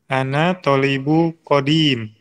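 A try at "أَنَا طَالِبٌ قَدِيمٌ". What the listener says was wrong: Coba sekarang kalau tidak ada alif lam harus kedengaran tanwinnya ya. Iya, kita masih tahap belajar jadi semua harus jelas. Yang tanpa alif lam ya, isim atau kata benda yang tanpa alif lam itu dibaca tanwin.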